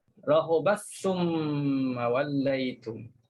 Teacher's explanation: kalau baca Ibnu Amir masukkan ta dalam sa, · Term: idgham